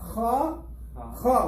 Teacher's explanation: From the top of the throat